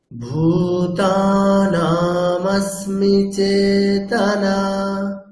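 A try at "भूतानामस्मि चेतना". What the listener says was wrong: আচ্ছা ভূতানা না টা দীর্ঘ আছে তাহলে দীর্ঘ ভূতানামাস্মি চেতনা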